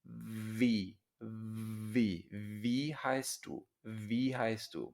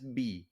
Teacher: una W se pronuncia como una B, como una V en inglés. Vi es labio dental.